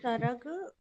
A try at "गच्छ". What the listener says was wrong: नहीं, देखिए, ये तो अनुस्वार नहीं है। ये के बाद ग है, और ये नीचे वाला अक्षर छ है ना। और और ऊपर वाला च है।